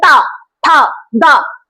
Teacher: इनका उच्चारण स्थान है दंत, दांत, हमारे दांत, दांतों से इनका उच्चारण बोलते हैं। देखिए जैसे ता, था, दा, तो इनमें क्या है, दांत का उपयोग हो रहा है, तो इनका उच्चारण स्थान है हमारा दंती।